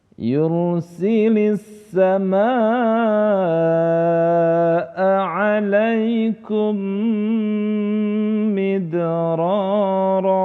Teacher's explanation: disitu terdapat hukum bacaan Idgham Mimi cara membacanya sukun dileburkan ke huruf mim berikutnya dan disertai dengan dengung